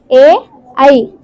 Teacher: కంఠ తాలవ్యములు అనగా కంఠము మరియు దవడతో పలికే అక్షరాలు ఏ ఐ ఇవి మనం కంఠముతో మరియు దవడతో పలుకుతాము ఎనిమిదవది కంఠోష్టములు కంఠోష్టములు